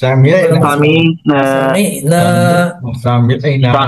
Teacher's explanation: সামিনা আইনটা যাবে গলার মাঝখানে।